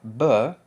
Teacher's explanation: The voiced bilabial stop, b, it's voiced because your vocal cords do vibrate.